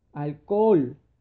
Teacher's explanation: se encuentra dos vocales abiertas se van a tener que separar